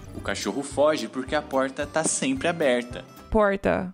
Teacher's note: e surgiu o r caipira também chamado de R retroflexo faz uma retroflexão indo até o fundo a boca eu já